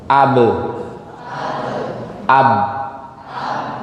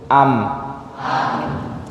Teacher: Ketika huruf tadi mim, waw dan ba, makhrajnya atau tempat keluarnya sama-sama di dua bibir.